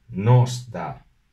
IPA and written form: nɔs da (nos da)